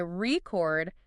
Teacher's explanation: stress on the first bit. That's the noun.